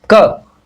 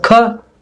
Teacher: क आराम से आसानी से उच्चारित हो रहा है और कम प्राणवायु इसमें से निकल रही है, और ख अधिक प्राणवायु निकल रही है और कंपन अधिक हो रहा है।